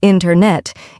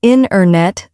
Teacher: The T sound gets softer or disappears. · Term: dropped sounds